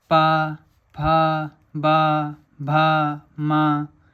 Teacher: इन सब का उच्चारण स्थान ओंठ होते हैं हमारे, ठीक है, लिप्स होते हैं। · इन सब का उच्चारण स्थान ओंठ होता है, ओष्ठ होता है। जो हमारे लिप्स होते हैं वो इनका सबका उच्चारण स्थान होते हैं।